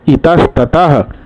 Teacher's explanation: चूंकि हलंत मैं इसलिए यहाँ बोल रहा हूँ कि त को तोड़ूंगा तो त हलंत जोड़ अ, तो आप लोग भी इसको जानते हैं पहले से। तो विसर्ग के बाद त हलंत आ रहा है इसलिए विसर्ग बदला दंत्य सहलंत में।